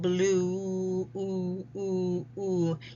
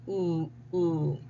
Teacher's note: You see the rounding of the mouth here, oo, oo, oo. Tongue is back, and it's high. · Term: ooh sound, oo sound